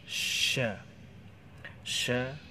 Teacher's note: di lidah bagian tengah menempel dengan langit-langit bagian atas